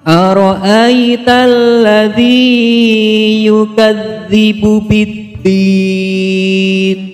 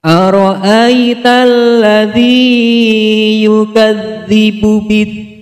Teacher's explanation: Alif lam syamsiyah, karena huruf lam bertemu dengan huruf lam. Cara membacanya adalah memasukkan huruf lam ke huruf lam, sehingga dituliskan huruf lam bertasydid.